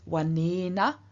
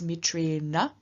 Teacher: So in one case we have ena and anam with dental ends, and in the other noun we have ena and anam with retroflex ends.